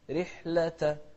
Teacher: الراء المكسورة مرققة،